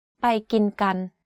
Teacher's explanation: all of the words are in middle tone. There are no tone remarks on any of these words. When you say the phrase, there's no stress on any pitch.